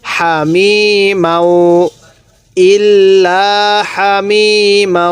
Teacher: ভুলটি করি হামি এই হাটা উচ্চারণের সময় আওয়াজ করে ফেলি না এই হাটা উচ্চারণের সময় মুখ দিয়ে হালকা বাতাস বের করব